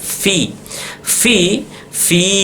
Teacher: gigi seri atas ketemu dengan bibir bawah yang di dalam v dia jadi bukan bibir ke bibir bukan tapi bibir bawah